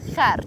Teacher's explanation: And you have to roll your R slightly to get it absolutely right.